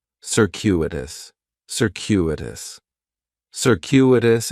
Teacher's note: the stress is going to be on that second syllable